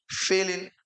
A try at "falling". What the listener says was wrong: Council is falling, not failing.